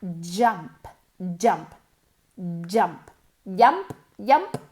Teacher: Es como una CH, ¿ok? La boca tiene que ir en la misma posición que una CH, pero moviendo las cuerdas vocales. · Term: el sonido de la J